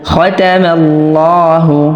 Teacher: আল্লাহ শব্দের লামের পূর্বের হরফে জবর বা পেশ হলে উক্ত লামকে অর্থাৎ উক্ত আল্লাহ শব্দের লামকে পোর বা মোটা করে পড়তে হয়। তো আমরা এখানে লা বলবো না, এখানে আমরা ল বলবো।